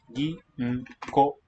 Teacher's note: O and u, when they're within the same meaningful part of a word, will just give a long o sound. Ginko, 4 beats, and it's 4 characters.